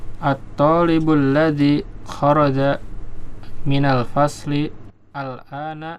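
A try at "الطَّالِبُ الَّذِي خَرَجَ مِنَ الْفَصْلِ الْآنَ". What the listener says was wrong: Ya, disambung coba. Minal faslil ana.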